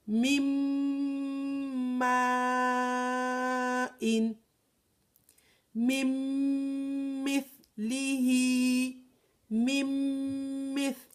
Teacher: We do not hear the nun sakin at all because with idgham.